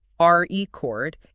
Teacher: If I make the first part strong, r e cord, it is a noun, it's an object. · But if I make the second part strong, record, it is a verb, it's an action.